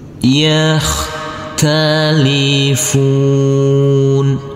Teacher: Huruf kho yang bersukun ini tidak boleh dipantulkan karena ini bukan bacaan qalqalah. Talifun. Huruf nun yang berfathah a ini, karena kita berhenti di sini, kita wakaf di sini di huruf yang terakhir, maka huruf terakhir tersebut yaitu huruf nun dibaca dengan sukun mati.